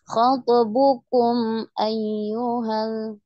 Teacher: kumnya jangan ditahan ya, izhar syafawi, jadi tidak lama. Tidak khatabukum, tidak seperti itu.